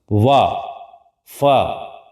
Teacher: ऊपर के दांत हमारे जो नीचे का ओठ है और ऊपर के दांत दोनों जब मिलते हैं तब ये ध्वनि निकलती है। · ऊपर के दांत और नीचे के ओंठ दोनों मिलकर के ध्वनि को निकालते हैं, इसलिए हम लोग दंतोष्ठ्य ध्वनि कहते हैं।